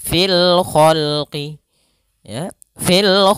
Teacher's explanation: kemudian Kemudian pada khqi ada alif lam alif lam Qariah yaitu alif lam yang ditulis dan dibaca sehingga suara lamnya terbaca dengan jelas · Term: Alif lam qamariyah